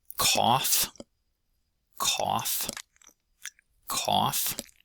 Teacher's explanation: That's an example of that aw vowel that some of you don't have. That is a mid-low or low-mid.